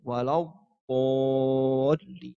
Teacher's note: makhrajnya ada di tepi lidah bertemu dengan gigi geraham bagian atas, bisa kanan, bisa kiri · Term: dhad